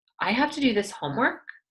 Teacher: since it goes up at the end I know that this is a question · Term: rising intonation